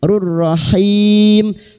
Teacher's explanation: tanwin bertemu ro idgham bila guna masuk pada huruf ro tanpa mendengung